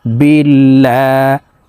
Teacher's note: আল্লাহ শব্দের আগের হরফে জের থাকার কারণে এই লামকে পাতলা ভাবে অর্থাৎ লা বলে পড়তে হবে